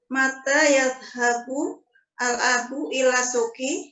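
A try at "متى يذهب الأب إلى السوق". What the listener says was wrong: Langsung digabung aja ya Bu. Alif lam di sini. Mata yadhabul abu ila suki.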